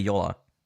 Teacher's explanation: I think they're going to pronounce the A and they're going to pronounce the J as a Y. It's going to be Yola.